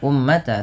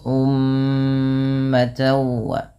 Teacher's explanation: mim berharakat tasydid ini ditahan dulu bunyi suara mnya sepanjang dua harakat karena terdapat hukum tajwid berupa bacaan ghunah maka jangan hanya sekedar ummat tapi ditahan dulu ummata wa kemudian pada lafal Di sini ada tan, yaitu ta yang berharakat tanwin.